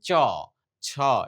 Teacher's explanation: উপরের তালুর সামনের দিকে জিউভা স্পর্শ করে যে ব্যঞ্জন ধ্বনিগুলো উচ্চারিত হয় সেগুলোকেই আমরা বলব তালব্য বা অগ্রতালুজাত · চ বলার সময় জিহ্বা উপরের তালুর সামনের দিকে স্পর্শ করছে।